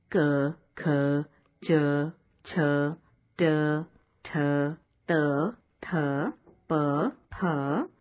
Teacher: अघोष। इन वर्णों के उच्चारण के समय स्वर तंत्रियां दूर दूर रहती हैं और उच्चारण में केवल श्वास का प्रयोग होता है।